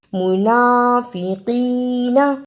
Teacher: منافقین زبر زیر پیش کو جلدی پڑھنا، زبر زیر پیش کو حرکت کہتے ہیں، انہیں جلدی پڑھا جاتا ہے۔ نون پر کھڑی زبر، اس پر تھوڑی دیر لگانی ہے اور یائے مدہ کو بھی صحیح ادا کرنا۔